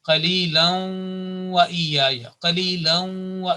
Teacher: This assimilation and joining, combining with nasal sound, 2 seconds, holding nasal sound for 2 seconds